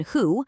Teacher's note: But for the vowel in who, your lips make a tight little circle. They're rounded.